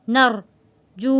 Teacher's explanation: را کو موٹا پڑھیں گے کیونکہ را سے پہلے زبر ہے۔ ونرجو، جو کو ہم اس لیے کھینچ کر پڑھ رہے ہیں کہ واو ساکن ہے، اس سے پہلے پیش ہے، واو ساکن سے پہلے پیش ہو تو حروف مدہ کہلاتا ہے، جو ایک الف کے برابر کھینچ کر پڑھتے ہیں۔